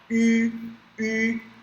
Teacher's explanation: esse U com trema a gente não tem no português, mas ele lembra aquele U do francês com bico. A gente tem que falar U.